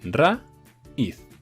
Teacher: tónica recibe el golpe de voz y como decimos raíz y le ponemos toda la fuerza en una vocal cerrada que sería una vocal débil como recibe la fuerza de voz se convierte en fuerte y al convertirse en fuerte se separan